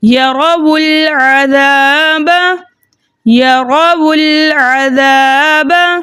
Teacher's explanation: ہم واؤلین جمع کو پیش دے کر اگلے کلمے سے ملا کے پڑھیں گے، ٹھیک ہے۔ ہم نے پہلے ساکن کو پیش دے دیا، دوسرا ساکن درمیانے کلام میں آنے کی وجہ سے حذف ہو گیا، اور تیسرے ساکن کو ہم جس واؤلین جمع کو ہم نے پیش دیا تھا نا اس کے ساتھ ملا کے پڑھیں گے۔ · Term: اجتماعی ساکنین فی کلمتین